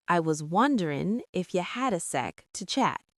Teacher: Wonderin' drops the G, and ifya links the sounds together. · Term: softening